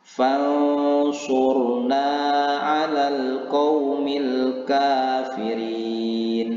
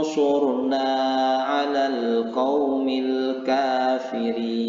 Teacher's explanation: menyembunyikan bunyi nun mati ini antara idzhar dan idgham atau dibaca samar-samar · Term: ikhfa